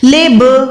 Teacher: اب لام کے ساتھ یہ جو با ہے وہ ساکن ہے، اور جب بھی با ساکن آتی ہے تو ہم آواز کو لوٹاتے ہیں، آواز کو جو ہے اندر کھینچ کے باہر چھوڑتے ہیں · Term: حروف کلکلا